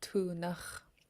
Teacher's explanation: it is a high tone A